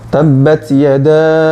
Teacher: Sifatnya hames, jadi ada hembusan angin. Tabbat, ada desis sedikit.